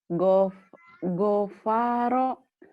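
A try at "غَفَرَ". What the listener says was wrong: Nggak ada yang panjang, Neng. Gofaro.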